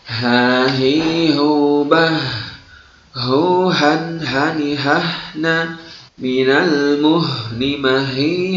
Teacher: Kesalahan dalam membunyikan huruf ha, terkadang seorang itu terlalu berlebihan dalam membunyikan huruf ha, seakan-akan huruf ha tersebut keluar dari dada, padahal huruf H, ya, huruf H itu keluar dari tenggorokan paling jauh, ya, atau aqsal halqi. Maka salah jika kita membunyikan huruf H seakan-akan huruf tersebut keluar dari dada, ya.